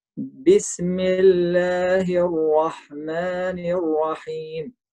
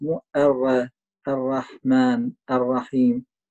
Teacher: الراء في الرحمن وفي الرحيم تكون مفخمة فما ترقق